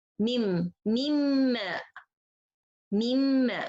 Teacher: I didn't say min, I say mim, mim, mimma, mimma. So the nun, it's disappear completely and I have غنة and the meme of the next letter right away. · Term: إدغام كامل بغنة